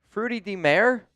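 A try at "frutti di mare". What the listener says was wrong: you don't pronounce the I. It's like fruit de mar.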